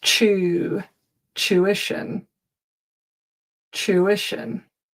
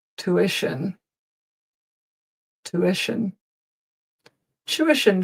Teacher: In North America, it's not a chew, it's a two. · In England, we begin with a ch sound.